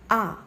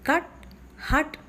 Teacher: Uh the oral cavity is a bit more closed. An example for a halfopen vowel in English is the sound ah as you find in cut